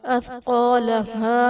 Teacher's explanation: اثقالہا میں الف سے پہلے زبر ہے، الف پر پڑھا جائے گا، اور قاف حرف مستعلیہ پر پڑھا جائے گا